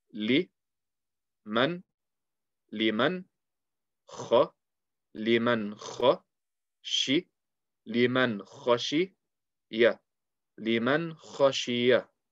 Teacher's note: So what I'm going to do is I'm going to apply the Idhar rule. I will keep the Noon Sakin clear with no change.